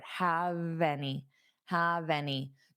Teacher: So, hold of that vv sound on have and take it to your next word.